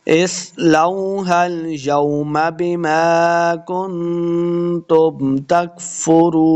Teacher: کاف کو موٹا نہیں کریں گے، را کو پر پڑھنا ہے، واو مد ہے، 2 حرکات اس کو لمع بھی کریں گے